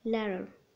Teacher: Flaps. This sound is produced by the tongue tip tapping the alveolar ridge briefly. هذه بحال صوت د خفيفة دغيا طرف اللسان كيقيس الالفيولار ريدج وكيرجع بحال في كلمة ladder كنقولو ladder.